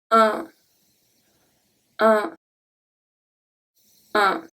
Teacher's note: your tongue is going to stay at the bottom of your mouth. The air goes through the mouth and through the nose, since it's a nasal sound. The mouth is going to be between rounded and naturally open.